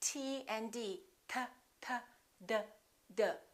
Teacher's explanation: T and D, T, T, D, D. They also have the same point of articulation because in both of those cases, the tongue is touching directly behind the teeth